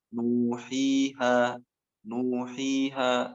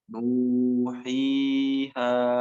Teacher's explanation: Mad asli ini dibaca 2 harokat ya.